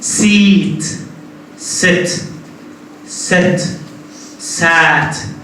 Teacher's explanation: your mouth is becoming more and more open